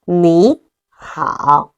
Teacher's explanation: Third tone plus the third tone. The first one gonna be pronounced as second tone. So we pronounce it as 你 好.